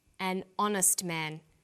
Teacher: So we say a happy man, but an honest man. The H is not pronounced, so honest sounds like it starts with a vowel.